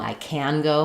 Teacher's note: I'm correcting you by stressing can instead of the main stress on the verb, the go.